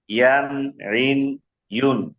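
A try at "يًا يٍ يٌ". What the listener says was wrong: না, এটা আপনার আইন হয়ে যাচ্ছে, আইন হবে না, নরমাল হবে শুধু শক্ত। এটা শক্ত করতে যায় যাতে আইন না হয়, প্রয়োজনে আপনি শক্ত না করতে পারেন, তারপরে আইন বলা যাবে না, ঋণ বলা যাবে না।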